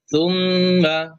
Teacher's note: মিমের উপরে তাসদিদ রয়েছে, গুণ হবে